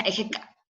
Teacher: Entonces, por ejemplo, en Ejecat se pronuncia Ejeca. Es como una aspiración mucho más fuerte.